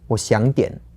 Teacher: So that's like half a third tone, a second tone, and then a third tone again.